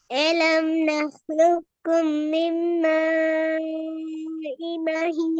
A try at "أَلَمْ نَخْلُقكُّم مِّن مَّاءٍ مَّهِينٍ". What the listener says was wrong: இந்த சத்த உச்சரிச்சீங்களா? மிம்ம இ மஹி இந்த சத்து யார் உச்சரிக்கிறது? விட்டு போட்டு ஓதணும் அப்படியா? மிம்ம இ மஹீன் அப்படிதான் ஓதுனீங்க.